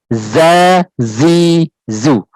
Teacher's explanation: Zai juga punya sifatnya dia jahar, ya. Rohwah juga, tapi tidak punya sifat isti'la dan juga itbaq.